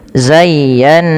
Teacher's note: Cara membacanya yang pertama ya dilembutkan zayya baru ditekan lagi ke nun zayyan. Nah, pada lafal nun yang bertasydid ini wajib ditahan bunyi nnya karena ia ada bacaan ghunah. Karena ada bacaan ghunah sehingga dipantulkan.